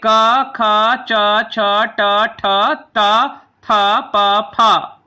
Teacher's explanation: जिन ध्वनियों के उच्चारण में स्वर तंत्रियों में गूंज उत्पन्न नहीं होती उन्हें अघोष कहते हैं